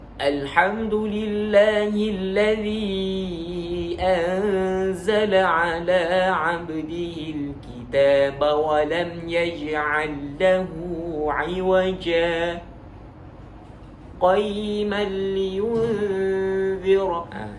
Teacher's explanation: Saktah berhenti tanpa mengambil nafas baru dan sambung. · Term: wajah saktah